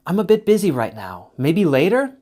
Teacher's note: Remember, falling intonation means I'm thinking or showing interest and still committed to the conversation. Rising intonation means I'm done, finished, and trying to end the talk.